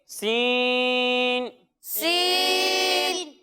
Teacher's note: जब हम सीन की अदायगी करेंगे तो इसमें सीटी की आवाज़ आएगी लेकिन इसे हम बारीक पढ़ेंगे